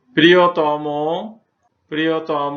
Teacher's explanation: তম, তর প্রত্যয়যুক্ত বিশেষণ পদের শব্দের অন্ত অ ধ্বনি সবসময় ও কারের মতো উচ্চারিত হয়